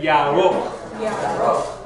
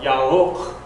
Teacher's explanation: the resh, the R, is not a forward roll, it's a backward roll. It comes from the back of your throat, so it's like you're swallowing your R.